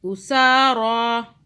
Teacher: سا کو کھینچا، را کو کھینچا، را کو موٹا بھی پڑھنا ہے